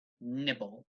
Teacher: the verb nibble the stress is on the first syllable